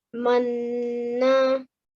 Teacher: we also press on the noon when there is a shadda on top of a noon, and then we make the nasal sound for 2 seconds. Okay, so in this case, we'll be reading the alif with the kasra, e, then joining onto the noon, making the nasal sound for 2 seconds, in, and then we will be reading the fatha. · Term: noon mushaddad